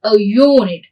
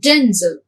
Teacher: So that is why they don't take an but take a. So words beginning with u or eu have an initial y sound.